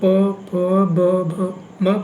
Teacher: जब आप प फ ब भ म पढ़ेंगे तो आपके जो होंठ होंगे वो क्या करेंगे, एक दूसरे से टच करेंगे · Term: ओष्ठ